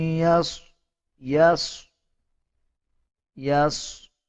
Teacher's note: صاد کو پر یعنی موٹا پڑھا جائے گا